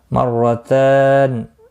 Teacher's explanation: الطلاق مرتان، الطلاق طا مستعلیہ ہے پر پڑھا جائے گا، لا الف مدہ ہے ایک الف کے برابر کھینچ کر پڑھیں گے، قاف مستعلیہ ہے پر پڑھا جائے گا، مرتان را زبر کی وجہ سے پر پڑھا جائے گا، تا کے اوپر کھڑی زبر ہے ایک الف کے برابر کھینچ کر پڑھیں گے اور نون ساکن رہے گا وقف کی صورت میں، وقف بالاسکان ہوگا۔